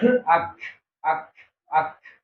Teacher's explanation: tapi disukunkan ya balik lagi tadi ke huruf Kaf ya jadi Kaf itu paling terasa sifat hansnya itu ketika sukun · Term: sifat hamsnya